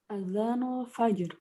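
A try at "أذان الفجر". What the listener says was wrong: Mumtaz.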